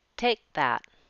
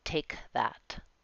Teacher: take has a bit of a stopped K as it links to that. Take that, not take that.